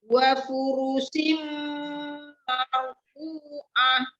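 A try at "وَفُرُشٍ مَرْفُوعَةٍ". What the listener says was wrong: Shi ya, syam, hurufnya shin ya. Wa furushim shim gitu ya, bukan sim. Sama marfu'ah. Marfu'ah. Dua harokat juga ya. Tebalkan ro-nya.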